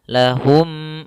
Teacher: maka masukkan suara mim yang pertama pada mim yang kedua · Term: idgham mimi